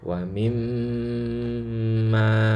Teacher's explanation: Kata wa mimma ini harus gunnah ya, wa mimma gitu. Gunnahnya kadarnya kira-kira ya kadar 3 harokat ya, atau sering pakai ketukan ya dulu.